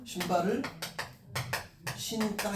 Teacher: 용언의 어간 부분이 니은이잖아요. 그 다음에 뒤에가 된소리가 나는 거야. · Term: 된소리 되기